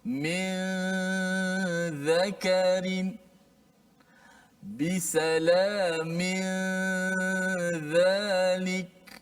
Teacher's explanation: Ini dia bukan idgham, bukan masuk. Nun itu hanya disembunyikan di sisi huruf ikhfa itu huruf zal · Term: ikhfa hakiki